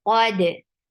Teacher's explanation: Qaf is heavy, and dal will get sifa of qalqala. Keep dal light.